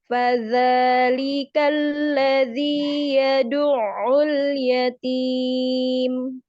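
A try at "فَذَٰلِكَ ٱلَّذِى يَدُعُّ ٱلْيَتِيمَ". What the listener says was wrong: Lagi sedikit lagi untuk ainnya. Yad'ul yatim.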